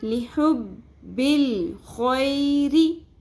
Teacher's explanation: اس کو خوئے نہیں پڑھنا، خوئے رے نہیں پڑھنا، خوئی. رو زیر ری، رو کو باریک پڑھیں گے، رو کے نیچے زیر ہے